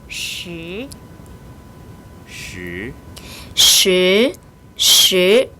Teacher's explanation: 권설음인데 이번에는 혀끝이 입천장에 닿지 않는다.